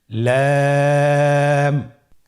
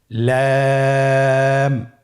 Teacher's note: লাম হরফটি উচ্চারণের ক্ষেত্রে অবশ্যই বারিক হবে এবং তিন আলিফ টেনে পড়তে হবে।